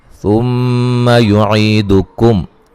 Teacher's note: मीम मुशद्दद पे गुन्ना ज़रूरी है